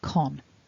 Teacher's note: But if you notice on the left, there's a blue mark at the bottom, and that tells us that con also gets a stress, but it's the secondary stress, so it's not quite as strong as the primary stress. So thinking about con then, we've got the k, o, n, and that gets a little bit of stress, so con.